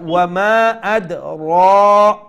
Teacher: So ra has a standing fatha. Okay, so you need to stretch it one alif long.